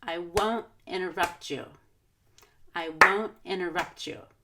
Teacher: I'm not going to stress I or you because those are pronouns which we reduce